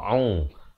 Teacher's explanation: ain, makhrajnya di pertengahan kerongkong